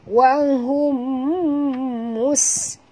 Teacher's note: Bunyikan safir pada sin.